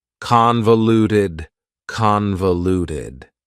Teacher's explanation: Convoluted also has 4 syllables, and the stress is on the first syllable, convoluted. That second syllable again has that schwa sound, that reduced vowel sound.